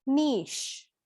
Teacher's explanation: So the CH is pronounced as a sh sound.